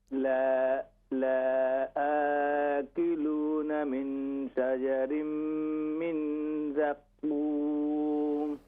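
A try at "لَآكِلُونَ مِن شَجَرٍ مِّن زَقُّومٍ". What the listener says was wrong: جی ماشاءاللہ بھی صحیح تھا.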